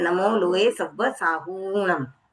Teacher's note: साहूम जो हु है वह दीर्घ है